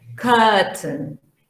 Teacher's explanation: Long schwa at the beginning and schwa by the end.